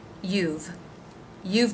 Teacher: same only with v a v sound at the end you've the y consonant sound oo as in boo vowel and the v consonant sound